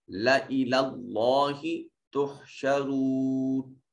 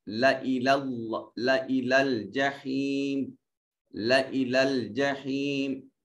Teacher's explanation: اس لام الف لا کو لمبا نہیں کریں گے، اس کے الف کو نہیں ادا کریں گے، لام کو جلدی سے ادا کریں گے۔